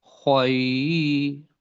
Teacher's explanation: خو کو موٹا بھی کرنا ہے، خو کو حلق سے بھی نکالنا ہے، اور یہ کے ساتھ ملانا ہے تھوڑا